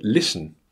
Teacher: the first syllable Liss is stressed and the schwa is in the second unstressed syllable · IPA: /ˈlɪs.ən/